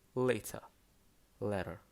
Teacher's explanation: in american english t is often pronounced as a flap t which sounds like d